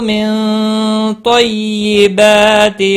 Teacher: نون ساکن کے بعد حروف اخفا کا طا آیا، اخفا حقیقی ہوگا۔